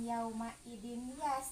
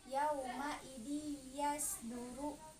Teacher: ada tanwin bertemu dengan huruf ya, maka dia disebut idgham biguna.